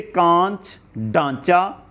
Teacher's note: मुख और नासिका दोनों से इनका उच्चारण होता है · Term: अनुनासिक